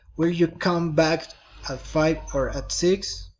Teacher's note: Alternative questions, rising and falling intonation.